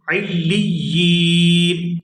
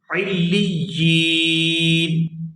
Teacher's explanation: وقف کی صورت میں نون جو ہے یہ بھی ساکن ہو جائے گا۔ علیین، وقف کی صورت میں اس کو پڑھیں گے علیین۔